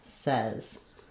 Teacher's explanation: The spelling looks like says, but it changes to the e vowel says.